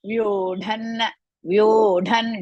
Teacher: Last anunasika of that varga, ta varga, because next letter is da.